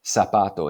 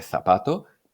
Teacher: es la desaparición del sonido interdental y consiste en pronunciar la z o la c como si fueran s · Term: ceseeo